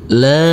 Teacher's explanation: Huruf lam kita baca panjang dengan panjang 2 harokat.